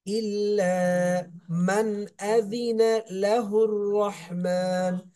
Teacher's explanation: মান এখানে কোনো গুণনা হবে না, নুন সাকিনের পর এজারের হরফ হামজা আসছে, এই জন্য গুণনা হবে না।